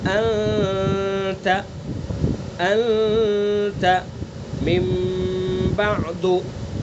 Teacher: تو اس لیے غنہ کی تعریف بیان کی گئی، ایک اچھی سنائی دینے والی گنگنی آواز ہے جو ناک کے بانسے سے نکلتی ہے، جیسے انت انت من بعد۔ تو یہ جو ناک سے نکل رہی ہے آواز، یہ گنگنی آواز، اس کو غنہ کہتے ہیں